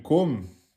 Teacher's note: Vous fermez la bouche et vous laissez sortir l'air par la cavité nasale.